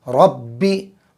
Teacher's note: را پر زبر ہے، را کو پر کریں گے، اور با پر تشدید ہے، 2 مرتبہ پڑھیں گے۔